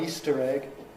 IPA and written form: ˈiːstər eg (Easter egg)